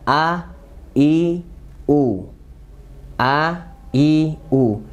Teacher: pertama makronya di pangkal tenggorokan ya a i u a i u dan sifatnya adalah tipis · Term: Hamzah